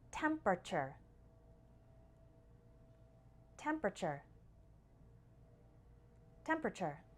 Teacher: the last part actually just sounds like chur in fast spoken English